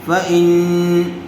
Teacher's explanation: فإن غننے کے ساتھ اخفا ہوگا اس لیے کہ نون ساکن کے بعد فا آیا ہوا ہے